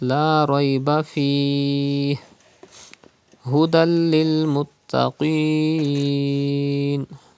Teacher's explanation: Idgham will be done, gunna will not be done, because in case of lam and ra, idgham is done without gunna.